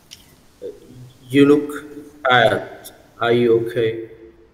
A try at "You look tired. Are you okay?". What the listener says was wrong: Rồi, okay.